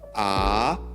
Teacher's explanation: at first the pitch goes downward and then makes an upward turn just like its symbol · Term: third tone